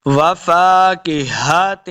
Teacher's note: ہا کو حلق کے نچلے والے حصے سے ادا کریں گے